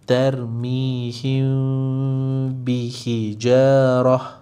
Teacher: Jadi tadi kita kena sembunyikan mim beserta dengung. Jadi sembunyikan mim bermaksud jangan sebut huruf mim. Bermaksud jangan tutup bibir. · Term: ikhfa syafawi